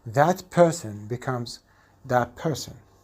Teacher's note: If CF is alveolar and CI is bilabial, the alveolar CF changes to be a bilabial consonant, just like the bilabial CI. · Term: Alveolar plus bilabial